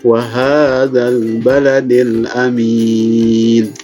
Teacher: Sama di sini juga ada ha, ada mad asli, panjangnya cuma dua harakat